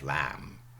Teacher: Modern English we have lamb without the b. Cluster reduction.